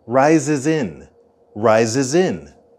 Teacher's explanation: at the end of the word Rises is Rises is and we also have a linking between the two words Rises and in